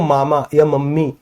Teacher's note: इन वाले वर्णों को बोलने में नाक से भी थोड़ी-थोड़ी वायु बाहर आती है। नाक बंद करके बोल के देखो मामा या मम्मी बी नहीं बोला जाएगा। · नाक बंद करके बोल के देखो, मामा या मम्मी, बब्बी नहीं बोला जाएगा, स्पष्ट तरीके से नहीं बोला जाएगा। तो सर इनके उच्चारण में नाक से भी वायु बाहर आती है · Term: नासिक